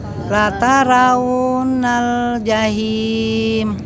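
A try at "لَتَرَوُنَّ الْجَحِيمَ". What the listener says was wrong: Huruf ro-nya Ibu ya. Lataro. Ya, bukan latara, lataro.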